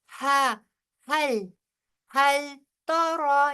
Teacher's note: یہ ہا سینے سے آئے گی آواز